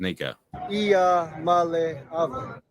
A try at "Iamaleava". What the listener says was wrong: I think you might have an extra vowel, though.